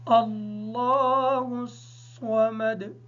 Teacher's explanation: صاد کو ادا کرتے وقت اس بات کا خیال رکھیں گے کہ سین کی آواز ادا نہ ہو۔